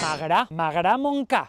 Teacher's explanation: Encara que s'escriu Montcada, la D entre vocals també cau en valencià